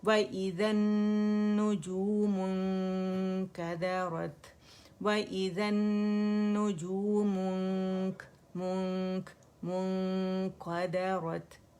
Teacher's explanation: موٹا نہیں کریں گے, مونک نہیں کریں گے, ٹھیک ہے, قاف کی طرف نہیں جائیں گے, کاف باریک ہے, ٹھیک ہے. وَإِذَا النُّجُومُ انكدرت وَإِذَا النُّجُومُ انكدرت كدرت وَإِذَا النُّجُومُ انكدرت وَإِذَا الْجِبَالُ سُيِّرَتْ وَإِذَا الْجِبَالُ سُيِّرَتْ وَإِذَا الْجِبَالُ سُيِّرَتْ.